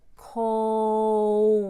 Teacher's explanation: cold there's definitely an L that has to be audible there when I say cold I do the O and then I add a W and a short u so that I have basically two syllables